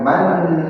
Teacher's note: Nun tasydidnya gunnah musyaddadah, nahnya itu mad tabi'i.